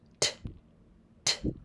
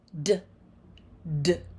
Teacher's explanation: Both of the sounds are made with the tongue on the ridge behind the teeth. The T is unvoiced. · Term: tip tappers